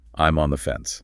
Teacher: You stress the preposition on.